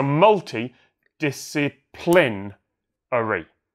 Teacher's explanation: You got to land on the first and fifth syllable of a 7-syllable word, and I think that's just really confusing because you've got that long string of unstressed syllables in the middle.